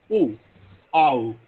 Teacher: first the tongue assumes the position for ah and then it moves towards articulating ooh